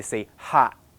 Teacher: You have to pay attention to this abrupt interruption in the airflow, because that is what we do. We just don't go to the end. We don't release the airflow. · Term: unreleased version